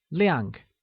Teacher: liang also said with the falling tone means bright